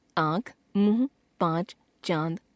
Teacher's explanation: अनुस्वार से मिलती जुलती एक और ध्वनि है जिसे अनुनासिक कहते हैं। इसका उच्चारण करते समय मुख से निकलने वाली हवा नाक और मुख दोनों से निकलती है।